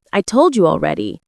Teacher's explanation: the falling tone shows finality.